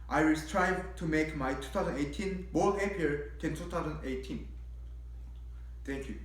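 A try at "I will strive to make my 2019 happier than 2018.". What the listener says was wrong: Almost your pronunciation was perfect. However, yeah, it's a little bit too fast. Don't feel like you need to say your stories too quickly. because sometimes it makes it a little bit hard to understand what you're saying.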